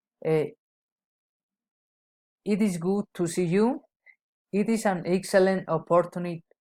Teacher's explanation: Exclamatory sentence, falling intonation.